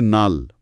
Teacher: লাল থেকে নাল, একটা ল বদলে ন। এটা সমীভবনের ঠিক বিপরীত।